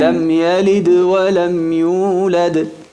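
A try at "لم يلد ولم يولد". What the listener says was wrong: No escucho el dal. Lam yalid wa lam yulad.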